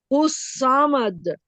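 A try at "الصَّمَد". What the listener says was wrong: समद नहीं, वही इंग्लिश वाला जो मैंने आपको बताया था ना, सौद के ऊपर जब भी जबर होगा तो इंग्लिश वाली प्रोनाउंसिएशन होगी SAW। सौमद।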